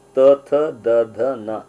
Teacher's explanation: ದಂತ್ಯ ದಂತದ ಮುಖಾಂತರ ಹಲ್ಲಿನ ಮುಖಾಂತರ ಉಚ್ಚರಿಸಕ್ಕೆ · ನಾಲಿಗೆ ಹಲ್ಲಿಗೆ ಟಚ್ ಆಗಿ ಈ ಧ್ವನಿಗಳ ಉಚ್ಚಾರಣೆ ಆಗುತ್ತೆ. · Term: ದಂತ್ಯ ಧ್ವನಿಗಳು